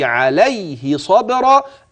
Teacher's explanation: وخلي بالك من الصاد المفتوحة وبعدها الباء المقلقلة والراء مفخمة